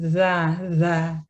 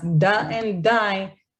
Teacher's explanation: The th sound occurs behind the teeth and it doesn't quite touch that part behind the teeth. Whereas da and die does touch the alveolar ridge and occurs much behind than TH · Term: alveolar sound